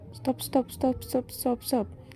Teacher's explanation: Dan jika ada huruf S sebelumnya apalagi diucapkan secara cepat, maka T tidak lagi ada di dental, seakan-akan huruf T dibentuk di palatal, seperti halnya bunyi S, karena S yang memengaruhi bunyi tersebut. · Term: asimilasi progresif